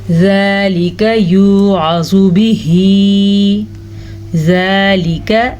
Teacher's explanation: ذال نرمی سے پڑھا جاتا ہے اور اس کے علاوہ ذال کے اوپر کھڑی زبر ہے تو اسے ہم کھینچ کے پڑھیں گے۔ ذالک یوعظ بہ، عین کے مخرج کو دھیان سے پڑھیں، زوا کو پر پڑھیں لیکن زوا کو کھینچنے کی غلطی مت کیجیے گا کیونکہ زوا کے اوپر پیش ہے۔